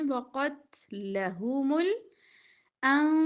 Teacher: قاف موٹا پڑا جائے گا تا باریک